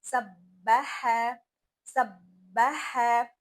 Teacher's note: تو با اور ہا ان دونوں کو موٹا نہیں پڑھنا. ہا کو ہم نے حلق سے ادا کرنا ہے اور ہا میں سانس کی آواز زیادہ آنی چاہیے